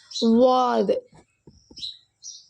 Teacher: நாவோட ஓரப்பகுதி நம்ம வலது அல்லது இடது கடவாய் பற்களில் படும் பொழுது வெளியாகுது